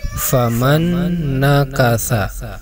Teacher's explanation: disitu ada nun mati menghadapi huruf nun ini juga sama ketika dibaca harus didengungkan sesuai dengan namanya yaitu Idgham Bighunnah nah atau idgham dengan dengung